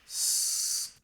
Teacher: notice how this s sound exists very very high up. This is almost above the range of the piano. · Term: aperiodic noisy sounds